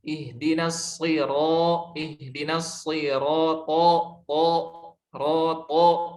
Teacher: Contoh aplikasi dalam Al-Fatihah, ihdinas shira, ihdinas shirata, roto. Nah, itu jadi lebih tebal huruf to karena to isti'la itbaq, kalau ro isti'la infitah.